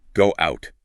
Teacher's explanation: If the first word ends in a vowel sound that forces your lips into a tight, rounded O shape, like an O, a U, or an W sound, your mouth will naturally insert a tiny, invisible W sound before the next vowel, simply because your lips are already in the exact position to make a W. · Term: W glide